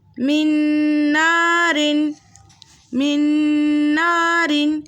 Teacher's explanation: نون ساکن کے بعد ینمو کے متحرک حرفوں میں سے نون آ رہا ہے، دو حرکت کی مقدار غنّے کے ساتھ پڑھیں گے، قاعدے کا نام ہوگا ادغام مع الغنّہ۔